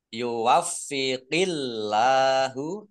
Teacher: Allahnya dibaca tipis karena harokat di depannya kasroh. Lam fathah berdiri, mat tobi'i, panjang 2 harokat.